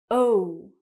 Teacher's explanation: when I say it, my mouth is round, it moves, and it gets smaller. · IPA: /əʊ/